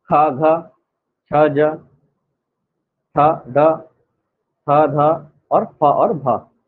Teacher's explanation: महाप्राण व्यंजन इसी को कहा जाता है। जब हम बोलेंगे तो मुख से क्या होगा? अधिक मात्रा में वायु बाहर आएगी।